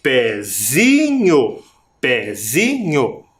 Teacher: Mas perceba que na sílaba, a sílaba mais forte é o zi.